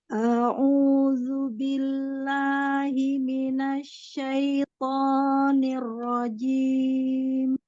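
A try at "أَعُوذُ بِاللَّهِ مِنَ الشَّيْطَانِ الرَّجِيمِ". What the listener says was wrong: Awalan ada huruf hamzah di situ ya. Hamzahnya tidak panjang, tidak au. Jangan ya, jangan dipanjangkan. Au, au langsung ya. A'udzu billahi minasyaitonir rajim.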